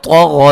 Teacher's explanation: غین کو موٹا ادا کریں گے، طا کو موٹا ادا کریں گے